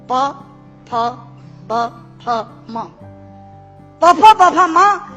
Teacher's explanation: दोनों होंठ मिलाकर बोले जा सकते हैं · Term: ओष्ठांग